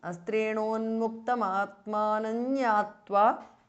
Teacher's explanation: the anuswara changes to nya which is the nasal of the cha varga.